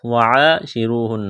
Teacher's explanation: وعاشروہن بالمعروف، وعاشروہن، الف مدہ ہے، الف کے برابر کھینچنا ہے، را کو موٹا کرنا ہے، را کے اوپر پیش ہے، واو مدہ ہے، الف کے برابر کھینچنا ہے، یہاں نون مشدد ہے، آواز ناک میں چھپائیں گے، غنہ کریں گے۔